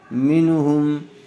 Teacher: نون ساکن کے بعد حروف حلقی میں سے ہا آیا ہوا ہے، اس لیے بغیر گننے کے جلد اظہار کر کے پڑھیں گے۔